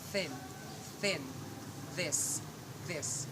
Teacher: Interdentals is sound produced with the tip of tongue between the upper and lower teeth. It is also called dentals.